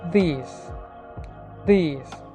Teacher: Dental, tip of ദി tongue and upper row of teeth are involve. ഫ്രിക്കേറ്റീവ്, air passes through ദി narrow space between ദ. Voiced sound ആണ്.